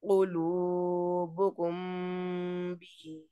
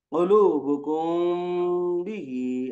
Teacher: आवाज को नाक में छुपाना, गुन्ना के लिए आवाज को नाक में घुमाना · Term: इख्फा शफवी